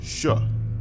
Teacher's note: By bringing the blade of your tongue close to the palatal alveolar part of your mouth, you produce Sh.